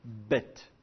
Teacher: la prononciation est dite occlusive dans le sens où je ferme la bouche je laisse pas passer l'air et d'un seul coup j'ouvre